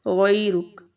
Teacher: और यहाँ पर हमारे पास या लीन भी है, या साकिन है और उससे पहले ज़बर है, तो इसको हम थोड़ा आधे अलिफ के बराबर लंबा करेंगे